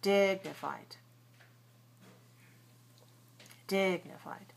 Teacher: the first syllable is longer because it's the stressed syllable